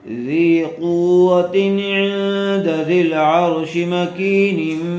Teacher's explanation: نون ساکن کے بعد حروف اخفاء میں سے دال آئی ہوئی ہے، اس لیے غنّے کے ساتھ اخفاء کر کے پڑھیں گے